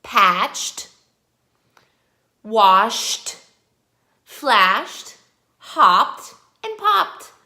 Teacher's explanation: Can you hear that we don't have that ED sound? We have just the T sound at the end